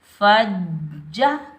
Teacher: فا کے اوپر زبر، فا کو ہم جیم مشدد کے ساتھ ملائیں گے، بغیر کھینچے پڑھیں گے، جیم مشدد کو ہم سختی اور جماؤ کے ساتھ ادا کریں گے